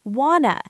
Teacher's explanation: the word to often becomes a very short t. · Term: connected speech